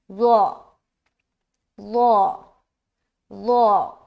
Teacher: ज़ो जो है एक मोटा हर्फ है और बगैर सीटी के अदा होता है